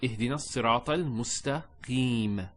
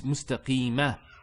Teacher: There's a fatha there, but we don't pronounce that fatha when we stop. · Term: sukoon